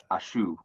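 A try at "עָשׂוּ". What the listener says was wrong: Asu with a sin.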